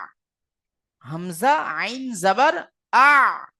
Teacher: আইনের মাখরাজ হলো গলার মাঝখান হইতে উচ্চারিত হয় আইনের মাখরাজ হলো গলার মাঝখান গলার মাঝখান থেকে আইনটা বার হয়েছে